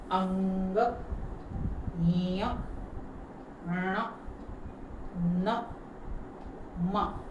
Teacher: છું ને એ તમારે પણ બોલવાનું છે અને ફીલ કરવાનું છે નાકમાંથી અવાજ આવતો હોય ને એવું તમને ફીલ થશે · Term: અનુનાસિક